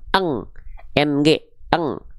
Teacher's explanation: apabila nun sukun atau tanwinnya ini berjumpa dengan qof dan kaf, maka oke dia dibaca samarnya mendekati bunyi samar dengung eng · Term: samar dengung ikhfa